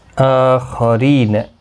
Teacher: آخرین حمزہ کے اوپر کھڑی زبر ہے، ایک الف کی مقدار کے برابر کھینچ کر پڑھیں گے۔ خا حروف مستعلیہ ہے، پر پڑھا جائے گا، را زیر کی وجہ سے باریک پڑھا جائے گا۔ ری یا مدہ بھی ہے، ایک الف کی مقدار کے برابر کھینچ کر پڑھیں گے۔